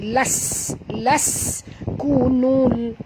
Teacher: Laskunul bunyikan sofir pada sin yang mati.